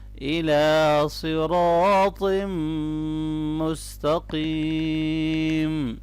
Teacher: را اور صاد دونوں کو موٹا پڑھنا ہے اور طا کو بھی موٹا پڑھیں گے۔ الف مدہ ہے، یہاں پر میم مشدد پہ غنہ ہوگا اور آخر میں یا مدہ ہے اور وقف لونگ کر کے کریں گے۔